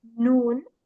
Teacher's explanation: With noon, the tip of the tongue touches the gums of the upper front teeth.